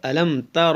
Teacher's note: یہاں پر اظہار شفوی ہے، یعنی کہ یہاں پر غنہ نہیں کریں گے ، را پر زبر ہے اس لیے را کو موٹا پڑھیں